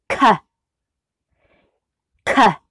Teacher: the block of air gets pushed forwards as the tongue drops down on the K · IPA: /k/